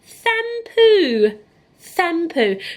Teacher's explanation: So not shampoo, there's no sh sound at the beginning.